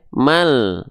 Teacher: cukup dibaca 1 harokat saja. Maka dari ma ini langsung masuk ke huruf lam. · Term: alif lam qamariyah